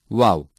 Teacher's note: Vav is pronounced by shrinking and extending forward both lips in an O shape. Vav is a weak consonant.